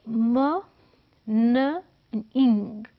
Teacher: म बिल्कुल बाहर है लिप्स के साथ, न इन बिटवीन है और इंग जो है वो नीचे है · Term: नेज़ल साउंड्स